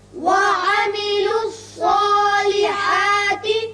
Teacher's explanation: یہ صاد حروف مستعلیہ میں سے ہے، پر پڑا جائے گا. اس کی وجہ سے جو کھڑا زبر ہے الف کا قائم مقام وہ بھی پر ہوگا.